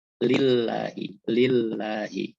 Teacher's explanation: Lafaz Allah ini didahului oleh tanda baca fathah dan doma, maka dia dibaca tebal. Tapi kalau didahului oleh tanda baca kasroh atau baris bawah, dia dibaca tipis.